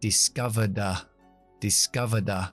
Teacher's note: Y termina en D. Después del sonido schwa, que es sonora, así que pronuncio D.